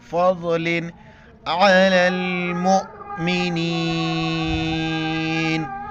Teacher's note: ضاد کے وقت داڑ کے ساتھ ٹچ ہو جائے گا